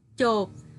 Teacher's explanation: Tiếng chộp có vần ốp mang âm pờ đứng cuối, nên khi đọc kết thúc tiếng môi khép kín.